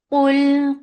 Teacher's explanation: Qaf is heavy, make Qaf heavy for Dhamma